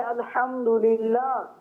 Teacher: جو بعد والی ہا ہے للہ وہ حلق کے نیچے والے حصے سے